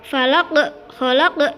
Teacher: qalqalah kubra di mana ada qaf di akhir kalimat